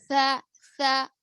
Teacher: زبان کی نوک اوپر نیچے دانتوں کے کنارے، یعنی تھوڑا سا باہر نکلے گی